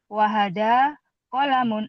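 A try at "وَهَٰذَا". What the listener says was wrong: Wahada. Wahada. Panjang dikit. Wahada.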